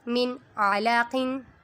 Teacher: میم، نون، زیر من، عین زبر آ، من آ، لام زبر لا، من اعلی، قاف دو زیر قن، من اعلی قن۔ میم متحرک، نون پہ اظہار کا قاعدہ ہو رہا ہے کیونکہ نون ساکن کے بعد حروف ہلکی میں سے عین آ رہا ہے۔ عین متحرک، لام متحرک اور قاف منون۔